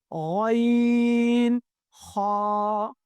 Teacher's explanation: حلق کے اوپر والے حصے سے ادا ہو رہا ہے